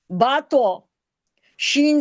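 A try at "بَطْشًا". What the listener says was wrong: क्या बना। बतो नहीं, बतौशा। बतौशा।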